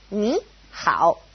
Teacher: if it's a third tone and a third tone next to each other, ni, hao, it changes to a second tone and a third tone